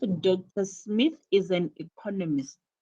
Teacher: This content word has new information. When you say Dr. Smith is an economist, you emphasize the word economist because this is a new information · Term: stress on economist